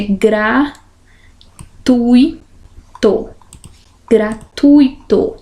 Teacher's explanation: Então, aqui eu tenho um ditongo. O U e o I não são separados. Se fosse, teria que ser acentuado, porque o I seria tônico.